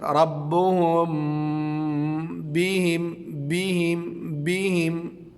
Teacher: یہاں پہ ایک بات کی وضاحت ضروری ہے کہ میم ساکن کے اخفاء کا مطلب یہ ہے کہ میم ساکن ادا کرتے وقت دونوں ہونٹوں کی خشکی کے حصے کو بہت نرمی کے ساتھ ملا کر غنہ ایک الف کی مقدار کے برابر ناک کے بانسے سے ادا کیا جائے، بہت نرمی کے ساتھ، اور اس کے بعد ہونٹوں کی تری والے حصے کو سختی کے ساتھ ملا کر با ادا کیا جائے۔